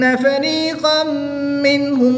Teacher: تنوین کے بعد میم حرف ملون میں سے ہے تو یہاں پر ادغام مع الغنہ ہوگا